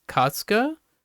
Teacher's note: katsuka is remarkably great because the emphasis would still be on the first syllable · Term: emphasis on the first syllable